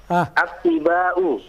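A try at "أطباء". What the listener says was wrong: Yang diberi tasdid ba'nya, bukan to'nya. Yang diberi tasdid ba'nya bukan to'nya. Naam, atibba'u. Jangan attiba'u, salah.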